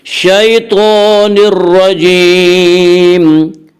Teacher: تو کے پر کھڑا زبر ہے، کھڑا زبر کو ایک الف کے برابر کھینچ کر پڑھیں گے۔ شیطان الرجیم میں ادغام بلا غنہ ہوگا، اسے ادغام تام بھی کہتے ہیں۔